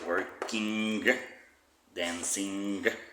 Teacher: it's nasal and at the same time it finishes in the throat